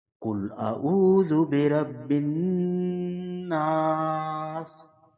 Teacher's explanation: نون کے بعد الف ہے، اس آواز کو بھی 1 الف کی مقدار لمبا کیا جائے گا۔ قل اعوذ برب الناس۔ · نون مشدد ہے، اس پہ غنہ ہوگا، غنہ کی مقدار 1 سے 2 سیکنڈ ناک میں آواز جاتی ہے، اور نون کے بعد الف ہے، اس آواز کو بھی 1 الف کی مقدار لمبا کیا جائے گا۔